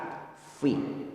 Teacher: Cara melafadzkan fa, perut bibir bawah bertemu gigi seri atas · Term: huruf F